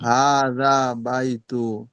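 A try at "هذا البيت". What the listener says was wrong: হাদাল আলিফ লাম আছে না ওই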